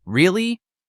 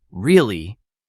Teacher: Say, really? With rising tone, you feel surprised. Say, really? With falling tone, sounds doubtful.